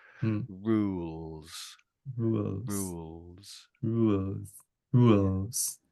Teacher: for the L in the middle, I'm touching the roof of my mouth for that. But for the R, I'm about halfway up. My my m my tongue is just about halfway between the top and the bottom of my mouth.